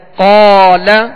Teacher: قاف جب ادا کریں تو اس میں ہونٹ گول نہ ہو، یہ حرف حروف مستعلیہ میں سے، اس کو پر بھی پڑھنا ہے